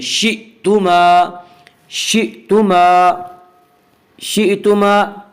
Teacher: شئتما حمزہ کو جھٹکے سے پڑھیں گے، شئتما نہیں پڑھیں گے، شئتما، شئتما، شئتما۔